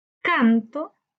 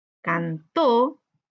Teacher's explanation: esa es una palabra aguda donde su sílaba tónica está en la última sílaba